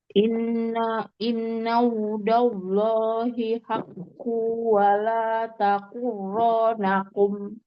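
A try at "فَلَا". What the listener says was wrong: Fala bukan wala tapi fala.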